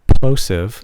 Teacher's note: you could hear that big puff of air when I hit that P with plosive